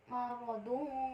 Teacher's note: cara membacanya yaitu samar dengan dengung dan ditahan selama 3 harokat